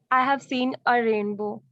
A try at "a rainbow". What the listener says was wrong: अब a को इतना भी pronounce मत करो.